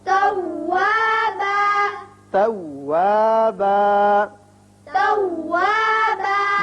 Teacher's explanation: وقف کی صورت میں ایک الف کے برابر آواز کھینچی جائے گی، زیادہ نہیں کھینچے گے